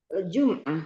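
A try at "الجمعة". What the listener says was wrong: Al-jumu'ah. Mimnya enggak sukun dia. Al-jumu'ah. Al-jumu'ah. Dan tidak panjang. Al-jumu'ah.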